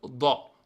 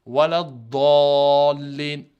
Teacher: Do en mettant la langue au-dessus, le palais, ouais, sur le palais, exactement. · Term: le Do